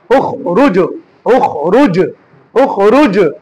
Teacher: তাহলে জিম এটা হচ্ছে কলকলা, খটা কলকলা হরফ নয়। খটা কিন্তু হরফে মুস্তালিয়া, মোটা করে পড়া